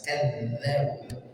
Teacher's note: huruf dzal, ujung lidah bertemu dengan ujung gigi dari atas. Kadzabu dialirkan.